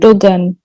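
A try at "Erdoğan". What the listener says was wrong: G is silent here. This G is silent. So the president of Turkey is Recep Tayyip Erdogan, but we hear in media and other news channels Recep Tayyip Erdogan.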